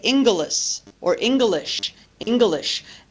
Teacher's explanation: adding a vowel sound in between the difficult consonant cluster